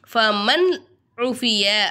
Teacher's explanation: நூனை சாக்கினை வெளிப்படுத்தி உச்சரிக்கணும். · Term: இல்ஹாருடைய சட்டத்தை